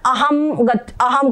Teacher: प्राय लोग इसका उच्चारण अहम ग अहम कर देते हैं। ये बिंदी का उच्चारण म करते हैं। यहां पर देखो ये अनुस्वार लिखा हुआ है।